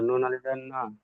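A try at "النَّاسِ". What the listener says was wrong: নুন আলি যাব না হয় না তো। নুন আলি যাব না, টান দিতে হবে তো। নুন আলিফ জবর না।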